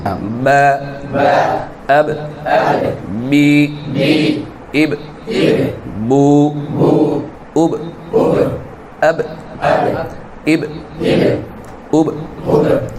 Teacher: দু ঠোঁটের ভিজা অংশ থেকে বা উচ্চারিত হবে। যাদের বাতাস বের হয় তাদের ভিজা অংশ থেকে বা উচ্চারণ হয় না, তাদের ভিজা অংশ থেকে উচ্চারণ করতে গিয়ে হয় না, ওই শুকনো অংশ থেকে হয়ে যায়।